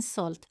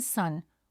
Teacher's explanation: the letter S is light in salt but deep in sun with more pressure and depth